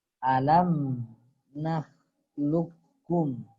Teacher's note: Jadi di sini qaf langsung masuk ke kaf. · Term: idgham mutaqariban